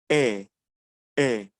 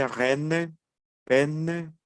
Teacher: la pronunciación de la letra e no es normal como en español es la boca un poco más abierta ejemplo e e yo exagero un poco para que logren apreciar